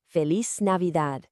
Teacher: Really roll that r and let the d at the end be nice and soft.